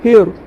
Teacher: الف لام کے بعد حروف شمسی میں سے را ہے تو الف لام کو نہ پڑھ کے ہا کو را سے ملا کے پڑھیں گے. ہیر را مشدد کے اوپر زبر ہے، را مشددات پور ہوگی. · را مشدد کے اوپر زبر ہے، را مشددات پور ہوگی. را کے اوپر زبر ہے، ہا کے اوپر جزم ہے، پچھلے والے حرف را سے ملا کے پڑھیں گے. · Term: حروف شمسی کا قاعدہ